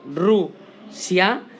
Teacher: Si yo me fijo bien, cuando digo Rusia, hay una pequeña y sutil fuerza de voz en una vocal A, que es la abierta. Y así comprobaremos y veremos que cuando separamos la palabra en sílabas, las vocales van juntas y por tanto es un diptongo.